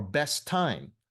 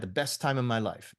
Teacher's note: So the first T just drops off.